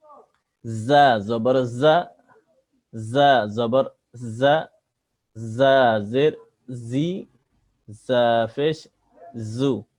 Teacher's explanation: জা জিবার আগা সামনে নিচের দাঁতের আগা থেকে, জা অক্ষর শীষ দিয়ে পড়তে হয়, জা উচ্চারণ একটু শীষ শীষ উচ্চারণ আসবে।